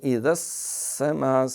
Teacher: سین باریک سیٹی، آگے مد متصل ہے